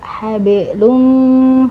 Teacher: Ditahan bisa sampai 2 harokat atau lebih ya dengungannya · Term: idgham bi gunnah